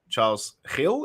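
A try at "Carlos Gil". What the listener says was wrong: it's Carlos Hill. So it looks like Charles, but there's no H. It's Carlos Hill, and the G is silent.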